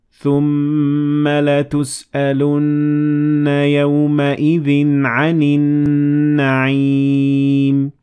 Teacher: there is mim with shadda, so you give it two harakat, and noon with shadda, so you give it two harakat, and this is the ghunna.